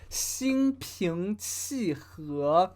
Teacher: So he pronounces an HE more like HUO